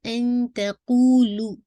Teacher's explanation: light اخوا کیجیے گا اور تا کے مخرج کے کلوز اپنی ٹنگ رکھیے گا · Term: اخفا